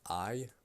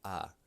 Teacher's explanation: Just I. Now knock off the second part of that diphthong that makes the y sound.